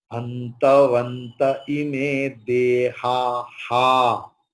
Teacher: visarga's pronunciation is like hakara, but the hakara will be pronounced according to the preceding vowel. Here, before visarga, there is a, deha.